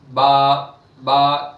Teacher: दोन होठों के गीले हिस्से से मिलकर बा अदा होता है